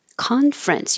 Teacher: We drop the middle ER so it's not conference, but just two syllables.